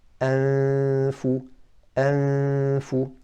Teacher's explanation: Well, what's being hidden is the Noon, because you're not pronouncing the Noon clearly. You're not saying N, so you're hiding it. But what's remaining of the Noon is a ghunnah from the nasal cavity.